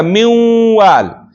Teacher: منوال کې نون په واو کې مدغمیږي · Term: ادغام ناقص